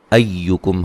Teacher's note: حمزہ کو یا سے سختی سے ملائیں گے، کاف کو باریک پڑھیں گے